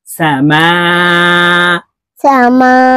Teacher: মিম চার আলিফ টান হবে